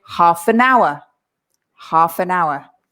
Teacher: the n from an pushes to our and we say nowa nowa so and so if i say it again we say